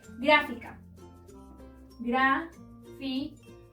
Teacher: La sílaba tónica se encuentra en gra, es decir, en la antepenúltima sílaba. Y, como siempre se debe acentuar, debemos agregarle la tilde.